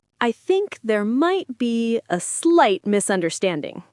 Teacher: The stress is on misunderstanding.